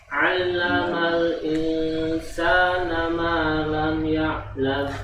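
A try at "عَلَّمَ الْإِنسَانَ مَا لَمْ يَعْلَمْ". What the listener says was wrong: Malam. Coba lagi. Itu masih ada pantulan tadi. Nyadar enggak antum?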